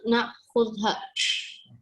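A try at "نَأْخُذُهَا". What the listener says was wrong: Nakhuduha, ada lemah di situ ya. nakhuduha. Ada nun di belakangnya.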